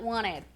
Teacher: E uma curiosidade com wanted, eu já expliquei em um vídeo, eu vou deixar ele linkado por aqui, que no inglês americano, muitas vezes quando o T é seguido de uma nasal, como em wanted, ele some e vira wanted.